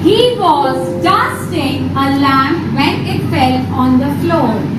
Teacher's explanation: in the first sentence I stressed more on dusting